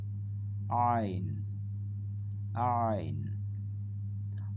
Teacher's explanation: গলার ভিতর থেকে চাপ দিয়ে উচ্চারিত হবে